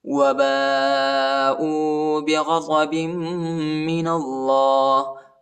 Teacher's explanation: الف پر جو ہے بڑا مد ہے، اس کو تقریباً 3-4 سیکنڈ تک کھینچنا ہے